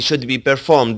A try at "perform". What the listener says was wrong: Should be performed. So when you use the verb perform, you want to put stress on that second syllable. Word stress is one of those areas that you've been consistently having trouble with, right?